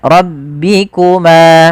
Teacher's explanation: Pada lafal ma ada mad thabi'i, yaitu panjangnya dua harakat.